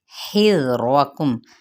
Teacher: خذو زال نرمی کے ساتھ، زو پہ واو مدہ کا قاعدہ ہے۔ حذرکم، ہا باریک وسط حلق سے ادا کرتے زال کے ساتھ ملائیں گے، را پر پڑا جائے گا، میم پہ اظہار شفوی۔